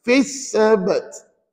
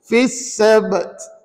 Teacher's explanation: Di ujung tadi ada huruf ta. Ta bila wakaf dia jadi mati kat situ ya.